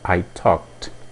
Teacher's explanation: é o presente o passado seria I talked mais uma vez o verbo termina em k então a pronúncia é T